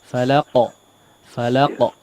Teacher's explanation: Iya, afwan, di sini qalqalah yang dipantulkan ya, falaqo. Qalqalahnya juga ikut menebal ya. Jangan tidak hanya memantul tapi ikut menebal karena qaf juga huruf tebal.